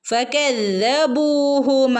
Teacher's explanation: ശ്രദ്ധിക്കണം ട്ടോ ഫക ദാലിന്റെ മുകളിൽ ശ്രദ്ധയുണ്ട് ഒന്ന് കനപ്പിച്ച് ഓതി കൊടുക്കുക ഫകബു ബിന്റെ കൂടെ വൗ മദ് വന്നിട്ടുണ്ട് രണ്ടനക്കം നീട്ടി ഓതി കൊടുക്കുക ട്ടോ ഫകബൂഹു ഇവിടെയും അങ്ങനെ തന്നെ രണ്ടനക്കം ഇതുപോലെ തന്നെ രണ്ടനക്കം നീട്ടി കൊടുക്കുക